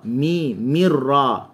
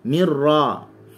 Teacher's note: Mi seringai, ra tebal.